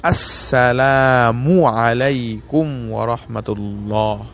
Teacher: আসসালামু এর মিমের উপর যে পেশ রয়েছে এটাকে এমালা এবং মজহুল করে না পড়ে সহি শুদ্ধভাবে উচ্চারণ করা · আসসালামু শুরুতে যে হামজা রয়েছে এই হামজা কে তাহকিক করে মজবুত করে মাখরাজ থেকে উচ্চারণ করা হামজাহ কে উচ্চারণ করার সাথে সাথে আসসালামু এর মিমের উপর যে